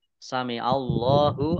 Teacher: Allahnya dibaca tebal karena harokat di depannya fathah. Lam fathah berdiri, mat tabi'i, panjang 2 harokat.